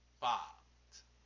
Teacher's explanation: Une pâte se prononce pâte plus longuement qu'en Île-de-France